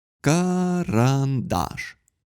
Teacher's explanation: Здесь у нас 3 ступени для фонемы «а». Первый аллофон – это максимально редуцированный шва.